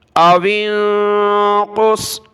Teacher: نصفہ او انقص، حمزہ زبر ا، واو کو نون کے ساتھ ملایا، واو نون زیر وین، قاف صاد پیش قص، او انقص، نون پر ناک میں آواز پیدا ہوگی